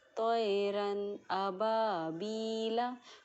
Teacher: इस रन में हमने नून को बिना किसी गुन्ना के, बिना किसी इख्फा के साफ ज़ाहिर करके हम आगे बढ़ जाते हैं। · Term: इजहार